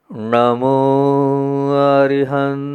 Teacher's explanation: जीभ को पीछे दो बार ले जाना है ण जो है ना पीछे जाता है पीछे मतलब जीभ को पीछे ले जाना है